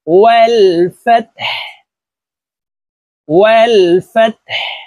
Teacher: হাকে ওয়াকফের ক্ষেত্রে সাকিন করে ফেলবো